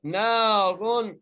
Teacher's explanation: را کو بغیر گنہ کیے پڑھنا ہے کیونکہ را کے بعد تنوین ہے